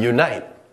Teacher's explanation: there's a slight y sound at the beginning, so we begin it with our y phoneme.